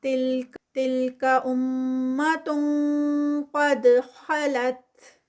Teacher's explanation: تلک امت قد خلت، تلک پہ غنہ، آگے تنوین ہے اور تنوین کے بعد قاف ہیوی والا قاف، تو اخفا ہیوی ہوگا اور ہم قاف کے ہی مخرج پہ چلے جائیں گے